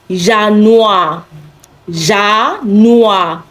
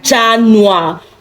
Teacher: Of course, it starts with letter J, but then it is not pronounced Januar because J in German does not sound J in words. It sounds Y